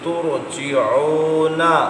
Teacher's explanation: را ساکن سے پہلے پیش ہو، را پھر بھی پر ہے